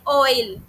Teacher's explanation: जैसे कि ऑयल ओ ई दो आवाज आ रही है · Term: डिप्थों्स